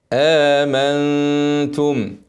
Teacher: نون ساكنه بعدها تاء اخفاء حقيقي غنه حركتين الغنه مرققه سهله امنتم والغنه ساكنه واضم بعد ما اخلص الغنه امنت